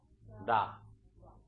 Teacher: the Japanese sound is kind of, I think, in between the American L, the American English L and R sound